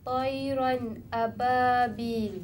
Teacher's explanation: Jadi hukumnya mesti diterangkan bunyi baris dua ni dan tanpa Dengung. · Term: izhar